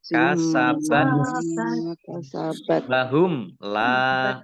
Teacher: mim sukun bertemu dengan huruf lam, bacaan izhar safawi, dibaca jelas. La lam fathah alif mat tabi'i.